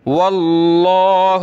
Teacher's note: لفظ اللہ کو موٹا کریں گے کیونکہ واو پہ زبر ہے